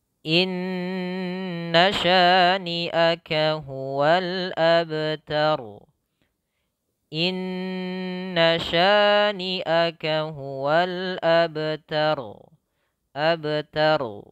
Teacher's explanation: Ya, ro-nya tebal lagi ya, ro-nya dibaca dengan tebal karena dia tafkhim, sebelumnya fathah